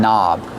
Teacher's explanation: The word knob has a silent K on it. Don't pronounce the K. Start with the N sound.